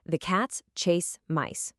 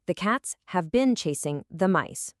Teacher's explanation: They take almost the exact same amount of time to say. Why? Because they both have three main beats, three main stresses. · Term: natural rhythm